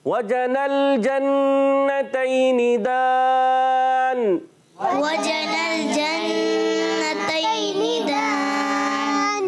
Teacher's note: नून मुशद्दद में होगा एक अलिफ का गुन्ना।